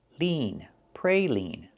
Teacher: This is a kind of candy, and it is pronounced praline. Use the long E like green beans for the second syllable.